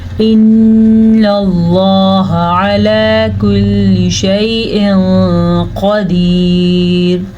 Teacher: इन्नल्लाह अला कुल्लि शैइन क़दीर, लफ्ज़ अल्लाह को हम पुर पढ़ेंगे क्योंकि लफ्ज़ अल्लाह से पीछे वाले हर्फ के ऊपर ज़बर है। नून पे गुन्ना हो रहा है, नून पे शद की वजह से। नून पे या मीम पे जब भी शद आएगी तो गुन्ने की कैफियत पैदा होगी।